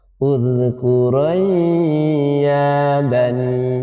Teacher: Nun sukun ketemu ya dibaca idgham. Nun sukunnya dimasukkan ke dalam huruf ya.